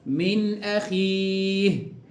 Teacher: نقرأ هكذا: من أخيه، بدون غنة، مفيش غنة خالص في الإظهار الحلقي